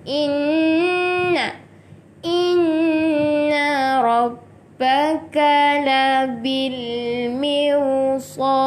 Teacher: nun yang ada syaddah, itu kena dengung 2 harokat